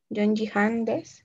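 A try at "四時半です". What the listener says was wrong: Quitemos la N al Yon. En cuestión de horas se lee yo. Yoji.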